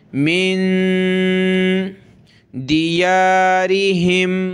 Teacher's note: نون ساکن ہے، ناک میں آواز پیدا کریں گے